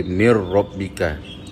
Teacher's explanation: Asalnya perkataan min rabbika, tetapi bila masuk ke dalam huruf ra dia jadi mir rabbika tanpa kita dengungkan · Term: idgham